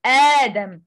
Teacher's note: مد البدل is lengthened for two vowel count by the way of recitation of حفص عن عاصم